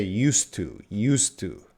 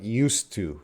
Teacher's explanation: The D is gone if we're using used plus to.